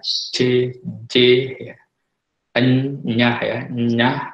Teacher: Nah, kalau saudara melafalkan misalnya bunyi H, ya, J, C, ya, saudara akan merasakan tengah lidah itu akan menyentuh langit-langit keras ya. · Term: bunyi laminopalatal